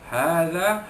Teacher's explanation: ha itu mad tabi'i, ya, mad tabi'i dibaca panjang 2 harakat